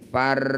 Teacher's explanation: baik diteruskan sukun didahuli fathah disebut bacaan Roim atau ro tebal bunyikan ro ini dengan tebal caranya kurangi getarannya jangan banyak bergetar